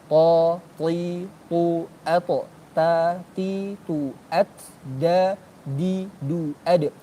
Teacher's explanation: Antara gigi seri dengan gusi. Jadi ta dal ta ujung lidah dengan pangkal gigi seri atas